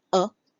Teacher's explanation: The a makes the schwa sound which is a puff of air